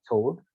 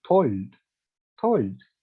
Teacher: She uh, takes the dark L and she makes it into an clear L.